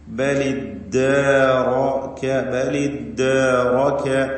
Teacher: തഹ്രീക്ക് എന്ന പരിഹാരം സ്വീകരിച്ചുകൊണ്ട് ബലിദ്ദാറക, ഇവിടെ റാഇന് മാത്രം തഫ്ഹീം നൽകണം എന്നതും പ്രത്യേകം ശ്രദ്ധിക്കുക. റാഇനെ തടിപ്പിക്കുക, ബാക്കി അക്ഷരങ്ങൾക്കൊന്നും തഫ്ഹീം വരാതെ സൂക്ഷിക്കേണ്ടതാണ്.